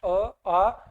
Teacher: तो अ का उच्चारण स्थान मैं आपको बता दूं, अ का उच्चारण स्थान अपन जब बोलते हैं अ आ, तो अपनी जो ध्वनि है वो कंठ से उच्चारित होती है। तो अ और आ इसका उच्चारण स्थान होगा कंठ।